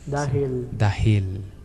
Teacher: Então o L no final da sílaba, no final de uma sílaba, vai ter esse levantamento, esse puxamento, que é dahil, que é a língua encostando no céu da boca